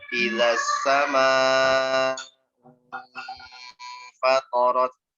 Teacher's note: Ya, huruf fa adalah huruf tipis. Jadi sebelumnya dhammah, kemudian ada ikhfa, hurufnya tipis, maka nanti dengungnya jangan menebal. Jangan terbawa-bawa sama si dhammahnya ini, jangan terbawa-bawa.